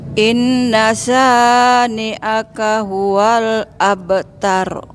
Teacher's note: Abtar agak dinaikin suaranya.